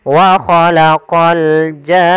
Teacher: Maka wa khalaqal jan baru masuk ke nun. Panjangkan janya dulu 6 harokat baru masuk ke nun. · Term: mad lazim kalimi musaqqal